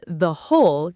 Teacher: on the whole keeps that short the because whole actually starts with a consonant sound, even though it's spelled with a sneaky, completely silent W. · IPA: /ðə/